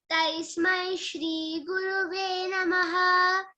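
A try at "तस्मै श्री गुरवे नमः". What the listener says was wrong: Gurave, it is Gurave, not Guruve. Tasmai Shri Gurave Namaha.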